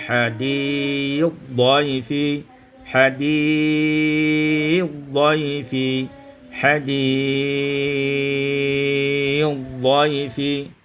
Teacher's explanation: diidghamkan sa pada dad menjadi hadith dhaifi, hadith dhaifi, hadith dhaifi. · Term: idghamut sa fil dad